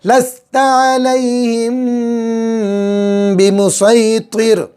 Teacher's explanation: میم ساکن کے بعد با آ گیا، اخفاء شفی ہوگا، گنہ ہوگا